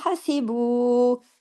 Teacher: بو کو ہم نے کھینچا اس لیے کہ اس کے ساتھ واو مدہ ہے، اور اس کے اوپر دیکھیں مد ہے۔